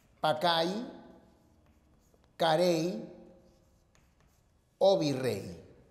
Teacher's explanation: La Y final suena I, ¿no? O sea, la Y final representa el sonido vocálico I.